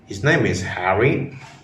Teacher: of using pitch to express surprise like his name is Harry with a slightly Rising tone that indicates you are shocked or surprised by this fact